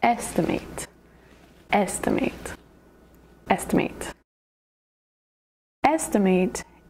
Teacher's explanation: Estimate has three syllables. Estimate. The emphasis is on the first syllable.